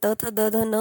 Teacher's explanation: थ द न म्हणत असताना तुम्हाला लगेच लक्षात आल असेल की आपली जीभ ना तालूला टच झाली ना मूर्धन्याला टच झाली आपली जीभ थोडी पुढे दातांना टच झालेली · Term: दंत्या